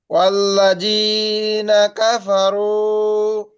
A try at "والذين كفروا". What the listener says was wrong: ভাই জি, জি শক্ত হয়ে যাচ্ছে কেন? জিব্বার আগে কামড় দিয়ে জি বলেন। ওয়াল্লাযী